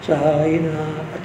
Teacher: साईनाथामध्ये था जो आहे कठोर व्यंजन आहे, वर जातं एकदम. साईनाथ. आता थावर काय करायचा, हलका आघात घ्यायचा.